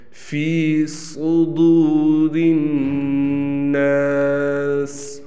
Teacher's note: یہاں بھی بعض بچے سین پڑھتے ہیں جبکہ یہ صاد ہے، اس کو موٹا کرنا ہے۔